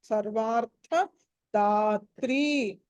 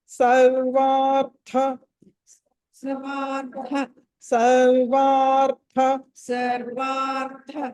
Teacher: సర్వార్థ అన్నది అక్కడ మహాప్రాణము, ఒత్తి పలకాలి.